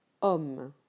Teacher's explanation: The O sound is an open O before 2 consonants, like homme